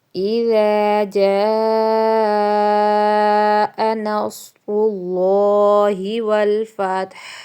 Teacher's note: ٹھیک ہے، اذا لال نرمی سے، الف مدہ آگے ہے، اور جاء پہ جو مد ہے وہ 4 سے 5 الف کے برابر آپ نے لمبا کرنا ہے، اور ناصر پہ جو صاد ہے وہ آپ نے موٹا کرنا ہے، را پہ پیش ہے آپ نے موٹا کرنا ہے، اللہ لفظ بھی موٹا کرنا ہے کیونکہ لفظ اللہ سے پہلے پیش ہے.